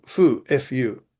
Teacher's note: the initial consonant differs from our f as the lower lip and upper teeth do not touch, the result being a kind of strongly aspirated wh